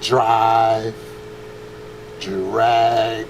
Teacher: when you add an R to a D, it becomes a J